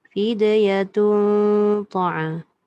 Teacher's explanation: Satu dal tu heret kan. Lepas tu tun tu tebal sebab jumpa ta.